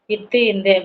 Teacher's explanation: அடுத்து இத்து இந்து அப்படின்னா பல்லினது அடியை வந்து நாக்கின் நுனி பொருத்துவதால் பிறக்கிறதுதான் என்னன்னா இத்து இந்து பல்லின் அடி வந்து நாக்கின் நுனி பொருத்துவதால் பிறப்பது